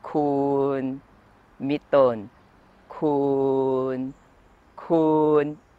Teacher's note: kun is pronounced with a long vowel sara u. If you pronounce it with a short vowel sara u, it becomes kun, meaning you.